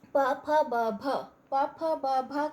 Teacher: प फ ब भ को बोलने में हमारे दोनों होंठ आपस में छुआते हैं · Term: ओष्ठ्य